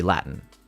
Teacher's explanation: But it's common in British English and uh for some reason Boston when I when I'm speaking of of stop consonants, I'm speaking of uh like uh if if I was to say the word L A T I N, I don't pronounce the T.